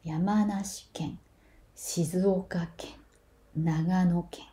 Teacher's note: when you add ken after a prefectural name, ken is always said low.